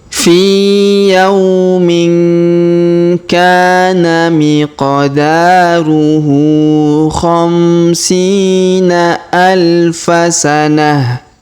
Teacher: Huruf ta' marbutoh di ujung kita rubah menjadi ha sukun ya